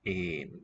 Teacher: Een, that is long mid vowel